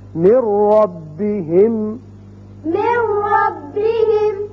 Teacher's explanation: را کی مثال نون ساکن کے بعد اب نون نہیں پڑھا جائے گا، میم را سے ملے گا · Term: ادغام بغیر غنہ